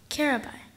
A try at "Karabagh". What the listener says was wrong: No, the ending. Carabah. Carabah.